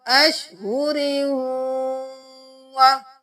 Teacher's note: रा को वाव में मुदगम कर देंगे। अशहुरी वाव की आवाज आई, क्योंकि तशदीद है तो पहले हमने रा के साथ वाव को पढ़ा। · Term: इदगाम